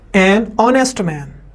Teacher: H is silent in ऑनेस्ट